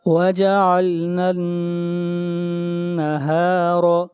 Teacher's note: نون کے اوپر شد ہے، آواز ناک میں جائے گی